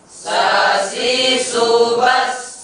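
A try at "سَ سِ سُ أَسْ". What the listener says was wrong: Ujung lidah itu ditempelkan di ujung gigi bawah. Jangan dilepaskan aja. Sasisu bas. Jangan. Tempelkan sedikit. Sasisu bas.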